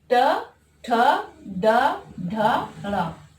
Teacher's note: इनका उच्चारण स्थान मूर्धन्य से होता है